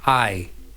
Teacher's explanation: the word I, one letter I, is wider vowel to narrower vowel E. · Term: diphthong